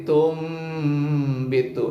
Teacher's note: Nun mati berubah dibaca jadi bunyi mim. Nun jadi mim, maka berubah pengucapan nun matinya jadi dengan bunyi mim. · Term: iqlab, iklab